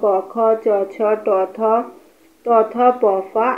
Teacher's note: ফুসফুস থেকে বাতাস বেরিয়ে আসার সময় এই ধ্বনিদ্বার কাঁপে। এই ধ্বনির উচ্চারণের সময় ধ্বনিদ্বার কম কাঁপে, সেগুলোকে বলে অঘোষ ধ্বনি